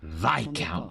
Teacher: You do want to stress on the first syllable. Viscount. On the I syllable.